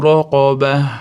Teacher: Raqobada ro'ni yo'g'ori aytamiz. Tafhim qof ham stilo harf yo'g'ori aytamiz.